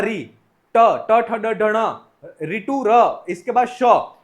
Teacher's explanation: इनका उच्चारण स्थान मूर्धा से होता है, इसलिए ये वर्ण जो है वह मूर्धन्य वर्ण है।